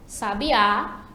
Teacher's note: Já sabiá, já a sílaba tônica é a última, né? Sabiá, que no caso é a ave, né?